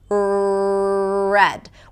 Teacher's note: in American English, the tongue doesn't touch the upper palate, it's pulled back.